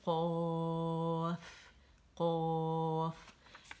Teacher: اس میں دیکھیں زبان کی جڑ ہماری گئی اور نرم تالو کے ساتھ لگ گئی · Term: قاف کا جو مخرج